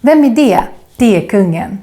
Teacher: A funny thing is that E is not only a letter and a vowel, it's also a word, at least in spoken slang Swedish. Because we have a tendency to say E instead of är, especially here in Stockholm